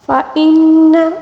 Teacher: نون مشدد کا غنہ ہے، ٹھیک ہے۔ اس کو تقریباً ہم نے 1 الف کے برابر کھینچ کر پڑھنا ہوگا